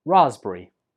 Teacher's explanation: three syllables Raz berri and the stress goes on the first syllable